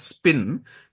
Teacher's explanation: So example of gestural overlap we see in the word called spin, the lip closure for P begins before the S sound ends.